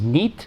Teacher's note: In Catalan, it becomes nit, where the o drops out entirely.